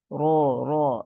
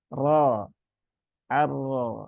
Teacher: Nah, ini ma-nya ya, ra-nya berbaris fathah, maka dia dibaca dengan ra yang tebal. Dan ra tebal itu bukan dengan memonyongkan bibir, bukan ro, enggak begitu. Tetapi tetap dibuka mulutnya, yang bermain adalah pangkal lidah yang ada di sini.